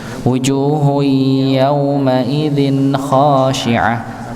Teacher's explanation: Ya, maka tidak dibaca memotong, jelas memang jelas, tapi dia sedikit ada sifat nun sukunnya itu. Ya, sifat mengalir sedikit dan gunahnya ada, namanya sifat bayiniyah di situ pada nun sukun.